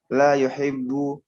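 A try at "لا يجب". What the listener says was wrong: bukan la yuhibbu, la yajibu.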